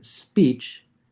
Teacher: as soon as I say speech, it has a very high F2 in the SPE, and then in the W it drops way down.